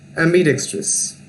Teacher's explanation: In the pronunciation of ambidextrous, there is a stress on dex syllable